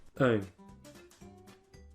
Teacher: So to produce this one, we're going to start with the sound, which is somewhere in the middle of your mouth. You want a little bit of lip rounding, bring your tongue forward a little bit, and then add the nasality to make ung.